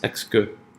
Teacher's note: The second syllable is not stressed, exca, and that'll be a schwa.